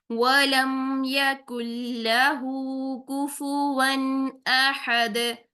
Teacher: गोल होठों से अदा करेंगे वी की साउंड नहीं लेकर आएंगे दांतों के साथ कोई टच नहीं करेंगे होठों का जस्ट होठों को गोल करेंगे लम मीम को · پھر سے واو آ گیا ہے، گول ہونٹوں سے ادا کریں گے، وی کی ساؤنڈ نہیں لے کر آئیں گے، دانتوں کے ساتھ کوئی ٹچ نہیں کریں گے ہونٹوں کا